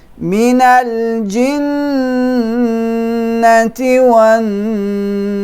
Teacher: I'm holding the noon with shadda, so the ghunna must be most complete.